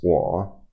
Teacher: So it's wa, and it's the third tone.